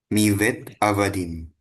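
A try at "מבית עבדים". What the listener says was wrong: Oke, B-nya pakai dagesh. Hampir ketukar ya.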